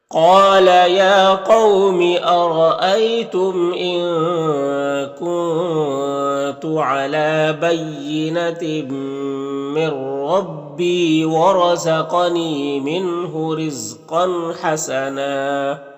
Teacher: تنوین کے بعد ہا ہے حروف حلقے میں سے تو تنوین میں اظہار حقیقی ہوگا. تو اسے ظاہر کر کے جلد پڑھنا ہے